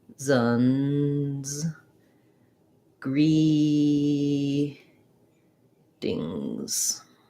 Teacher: using your voice not csun but season or seasons um and in greetings we have a flap t it sounds a little more like a d sound so i would rewrite that maybe as c zones gree dings